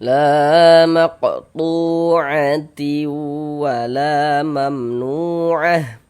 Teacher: Ada huruf waw sukun sebelumnya harokat dhammah, maka huruf yang memiliki harokat dhammah dibaca panjang. Sehingganya tu kita baca panjang, mad tabi'i panjang 2 harokat sesuai dengan rumus 2.